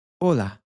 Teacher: the h is silent in Spanish